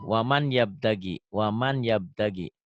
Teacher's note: Bunyi N-nya masuk ke Y. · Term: melebur